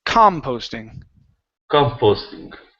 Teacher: The stress is at the very beginning.